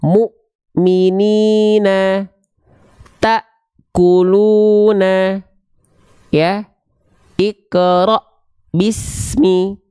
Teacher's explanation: huruf-huruf yang bertemu dengan Hamzah sukun itu terhenti kayak ada portal kayak tertahan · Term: syiddah